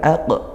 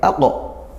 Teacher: karena huruf tebal ya. Huruf tebal itu pangkal lidahnya naik. Lo, maka bukan aq, tapi aqo.